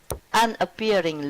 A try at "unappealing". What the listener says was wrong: Okay, nicely read, but not unappearing. Appear, disappear. Okay, but this is from appeal, to be appealing, unappealing.